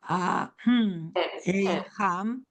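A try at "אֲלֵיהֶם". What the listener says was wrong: It's a short E. Ahem. The first one's an E. Etza. Etza. Ahem.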